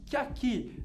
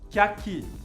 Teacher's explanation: ligando o que com o aqui. E nesse caso, é o contrário do exemplo anterior, você pronuncia bem o a, do aqui, vogal forte.